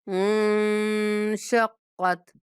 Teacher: اِذَا السَّمَاءُ انشقت، نون پہ اخفا کریں گے